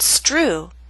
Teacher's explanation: with st or str the true T loses that strong puff of air